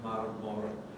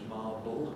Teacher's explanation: So either you get Latin marmor, giving English marble, where the second R turns into an L